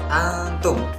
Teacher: maka huruf nun dibaca dengan samar dan mendengung mendekati huruf ta, antum, dan tidak boleh dibaca dengan jelas antum. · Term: hukum bacaan ikhfa